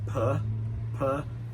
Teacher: That second syllable we've got (is) weak, so we've got puh puh That uh sound (is) very relaxed